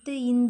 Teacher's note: சொல்லும்போது நம்ம நாக்கோட நுனி வந்து மேல்வாய் பல்லோட அடிய பொருந்தும்